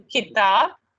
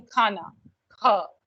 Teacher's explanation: It is an aspirated one where the k and the extra sound of air release that we put in with comes in.